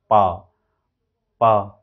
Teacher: लिप से आप उस एयर को रोक दे रहे हैं और अचानक छोड़ दे रहे हैं, तो इंटरप्शन हुआ।